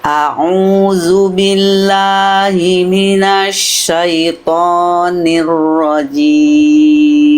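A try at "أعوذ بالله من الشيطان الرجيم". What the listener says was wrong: Kalau pengen kita maksimalkan lagi di huruf lam jangan billah. Billah. Lam itu huruf tipis jangan lo. Tapi la. Lidahnya dalamnya rileks. Ya, billah, jangan billah. Billah. A'udzu billahi minasyaitoni.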